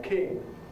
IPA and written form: kɪŋ (king)